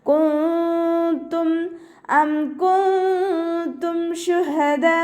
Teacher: നൂൻ സാക്കിനയ്ക്ക് ശേഷം ഇഖ്ഫാൻ്റെ ലെറ്ററായിട്ടുള്ള താ വന്നിട്ടുണ്ട്. നൂൻ സാക്കിനയെ മറച്ചു വെച്ചിട്ട് മണിച്ചോതി കൊടുക്കുക.